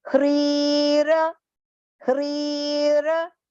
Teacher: Here you have to keep in mind, it is a long pronunciation. It is half h and complete r with a long e vowel sound.